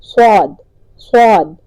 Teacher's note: زبان میں ایک بل سا آتا ہے، کروٹ سی آتی ہے، اور منہ میں ہوا فل ہوگی، صاد، صاد، اور یہ موٹا ادا ہوگا، آسو، آسو، سو، سوئی، سو، سو، سوئی، سو۔